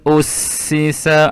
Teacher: Huruf alif adalah huruf izhar halqi. Maka tanwinnya dibunyikan dengan jelas dan tiada dengung